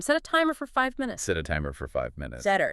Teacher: But let's see if we can make it flow just a bit more naturally, like how native speakers might say it quickly. That little connection between set and a. It should be really fast, almost like one sound.